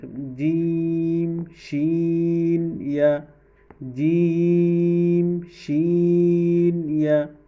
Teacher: ৬ নং মাখরাজ জিহ্বার মধ্যখান তার বরাবর উপরের তালুর সাথে লাগাইয়া ৩টি হরফ উচ্চারিত হয়, জিম শিন ইয়া, জিম শিন ইয়া শক্ত করে ৩টি হরফ উচ্চারিত হয়।